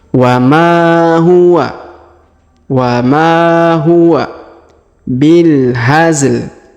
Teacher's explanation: huruf ma dipanjangkan 2 harokat ya karena ada alif